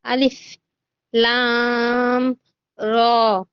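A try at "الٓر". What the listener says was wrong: কিন্তু লামটাকে আরেকটু টানবেন আপনি। আলিফ লাম র।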